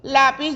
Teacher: lleva el acento en la penúltima sílaba que sería la sílaba tónica y entonces el lápiz es una palabra grave luego venimos con